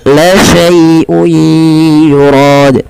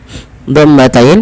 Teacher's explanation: lembutkan dalam melafalkan ya sukun yang di dalam dengan fathah karena dia ada bacaan lin, lembut di dalam melafalkannya.